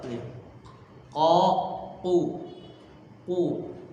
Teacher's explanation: dari pangkal lidah bukan dari tenggorokan